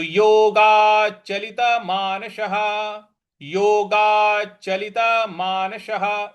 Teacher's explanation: स के आगे विसर्ग है और उसके आगे कोई शब्द नहीं है तो इसलिए उसका मानसः ह उच्चारण ले आएंगे